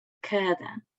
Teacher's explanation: o A também está em posição tónica, mas não é articulada como vogal aberta